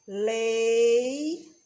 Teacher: o E vai ser vogal e o I vai ser semivogal, porque foi pronunciado com menor intensidade, foi mais fraco. E nesse caso aqui, a gente só pode ter uma vogal por sílaba.